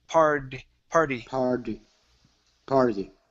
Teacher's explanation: so switch that T to a flap T sound. It's d, party.